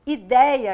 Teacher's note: Ideia aqui, nos trópicos, lugar solar, as pessoas mais expansivas, nós falamos com esse som aberto.